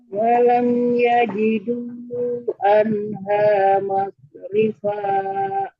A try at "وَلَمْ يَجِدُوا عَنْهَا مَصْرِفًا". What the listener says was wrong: Ibdalnya jangan dipanjangkan, yang terlalu panjang. 2 harokat. ولم يجدوا عنها مصرفا.